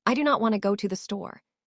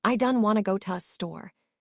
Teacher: The do not becomes done. The want to becomes wanna. The first to becomes ta. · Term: Native pronunciation